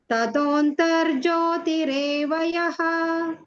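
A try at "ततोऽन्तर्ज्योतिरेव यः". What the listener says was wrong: ನಿಮ್ದು second line ತಥತೋ ಅಂತ ಇಲ್ಲ ತಥಾಂತರ್ ಜ್ಯೋತಿ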